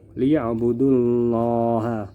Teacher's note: Lafal Allah di sini berada setelah huruf yang bertanda baca dhammah, maka dibaca tebal. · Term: tafkhim